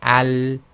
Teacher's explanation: So when we say al, there's no burst of air at the end, and it's between stoppage and continuation, not completely stops and not carrying on too long · although the tip of the tongue is touching the front upper hard palate, it's really the entire front of the tongue, and there's pressure on the left hand side as well. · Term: lam